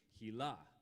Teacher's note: her name is pronounced on the second syllable the way israelis pronounce their names